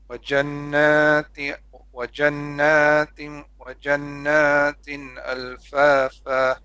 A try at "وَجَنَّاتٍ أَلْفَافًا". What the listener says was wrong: A little bit longer on the غنة. وجنات ألفافا.